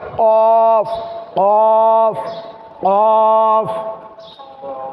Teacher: জিহ্বার গোড়া তার উপরের বরাবর তালুর সঙ্গে লাগিয়ে উচ্চারণ করতে হবে